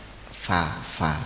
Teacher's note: Bibir bawah bagian dalam mengenai ujung gigi depan atas. Fa ya, memang ini Kalau ini bibir ya, bukan lidah.